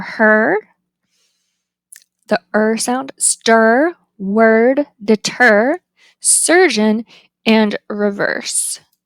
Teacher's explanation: The height is mid, and it's central, rounded, and tense. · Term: right hook reversed epsilon